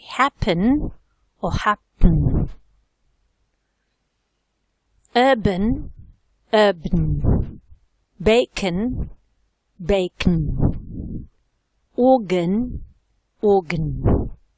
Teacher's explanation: in some words you've got the possibility to elide the schwa. That is, to omit it, not to produce it.